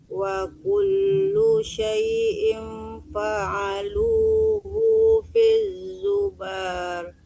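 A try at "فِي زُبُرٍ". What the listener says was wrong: Zubur, bukan zubar. Zubur, tidak ada panjang. Tidak boleh panjangkan bu-nya. Zubur.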